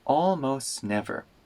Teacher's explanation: the T in almost disappears